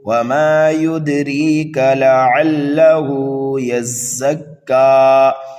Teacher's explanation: یا کو زا میں ملائیں گے اور زا کو کاف میں ملائیں گے